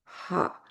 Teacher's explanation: हा हलक के दरमियानी हिस्से से निकलता है। हलक के हरूफ गहरे, दरमियानी और ऊपरी हिस्से में तकसीम होते हैं और हा दरमियानी हलक का हरफ है, इसीलिए इन हरूफ को हल्की हरूफ कहते हैं।